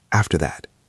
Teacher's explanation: Listen to the stress on the words, after that. We usually go up a little bit in pitch on that phrase, after that.